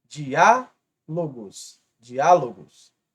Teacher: aqui temos a antepenúltima como a mais forte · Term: proparoxítona